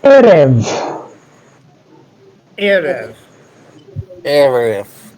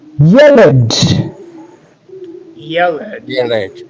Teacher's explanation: They're very simple two-syllable nouns, and they are featuring the segol in the second syllable. The impact of the segol in the second syllable is to force the accent onto the first syllable. So we want to be mindful of this special class of nouns because they form an exception to our rule, which is normally to accent the last syllable of our Hebrew words. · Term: segolates